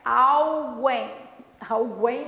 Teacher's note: Como esse U não é pronunciado, o M é. O M é pronunciado como se fosse um Izinho